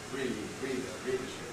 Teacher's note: Readership. You can hear how the E gets successively shorter. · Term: rhythmic clipping